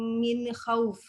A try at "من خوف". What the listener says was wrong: من خوف بدون قلقلة. من خوف bukan قلقلة.